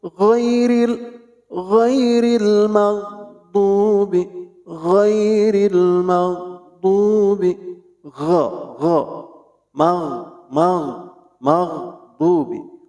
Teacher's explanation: ghin adanya di adnal halqi, itu di ujung tenggorokan